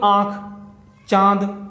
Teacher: अनुनासिक स्वर होते हैं हवा मुंह के साथ साथ नाक से भी निकलती है।